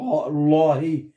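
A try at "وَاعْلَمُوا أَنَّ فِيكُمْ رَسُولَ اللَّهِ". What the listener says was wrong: لا شوفي هون فتحة ولا كسره هون وان فيكم رسوله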